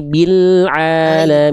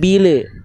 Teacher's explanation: lam sukun jangan sampai memantul bunda.